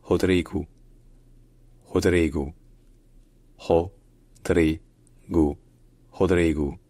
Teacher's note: le O à la fin d'un mot en portugais, ça se dit ou. Donc ce n'est pas Rodrigo, c'est Rodrigo.